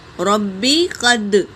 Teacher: را حرکت ہے، با پر تشدید ہے، اسے 2 بار پڑھیں گے۔ قاف حرکت ہے، دال پر سکون ہے، یہاں پر قلقلہ ہوگا، قد، ربی قد۔